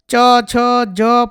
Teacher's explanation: આ બધા તાલવ્ય વર્ણાનામમાં આવશે એટલે કે તાલુ સ્થાનેથી ઉચ્ચારાતા વર્ણો છે